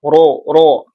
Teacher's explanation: ro di sini ee hukumnya tafkhim ya, dibaca tebal